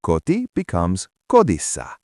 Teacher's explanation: A single T likes to turn into a D.